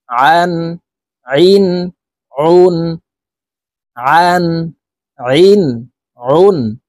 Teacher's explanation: হালকের মধ্যখান থেকে চাপ দিয়ে আইন হরফের উচ্চারণ করব